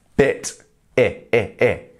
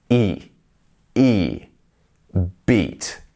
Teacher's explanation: bit is the quick one bit I and then we have beat which is a bit more drawn out